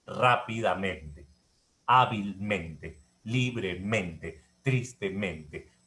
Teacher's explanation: Sin embargo, para una cuestión operativa se consideran como palabras graves. Es decir, la tilde va en ra, pero en realidad la sílaba tónica está en men. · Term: doble sílaba tónica